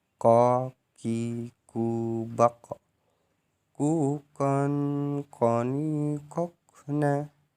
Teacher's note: Baik, yang ke-21 melafalkan huruf ko dengan menyentuhkan pangkal lisan dengan langit-langit bagian belakang